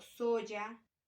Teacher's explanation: El sonido consonántico se articula en el paladar, de allí se le llama consonante fricativo, palatal sonoro